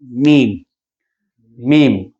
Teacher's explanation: मीम होंठों से अदा होने वाला हरफ है